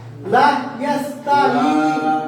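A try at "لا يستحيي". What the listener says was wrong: ইয়াস্তাহ তো লা কেন টানেন জবরের পরে আর ইয়াতে ইয়াতে তিন আলি টানেন ইয়াস্তাহি মধ্যে উপরে ছিল উপরে ছিল তিন আলি মান্নাম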